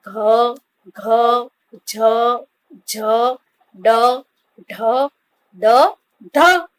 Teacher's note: નાદ તંત્રી સહેજ વધુ કંપનની અવસ્થામાં હોય ત્યારે જે ધ્વનિ ઉત્પન્ન થાય તે ઘોષ ધ્વનિ તરીકે ઓળખાય છે.